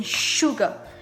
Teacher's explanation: sometimes you pronounce like sh, as in sugar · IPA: /SH/